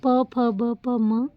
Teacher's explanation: इसमें हमारे लिप्स का दोनों लिप्स का यूज हो रहा है · ओष्ठ्य जो है वो प फ ब प म ऊ, क्योंकि इनको प्रोनाउंसिएट करते समय हमारे दोनों लिप्स टच होते हैं, लिप्स को हिंदी में ओष्ठ बोलते हैं। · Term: ओष वर्ण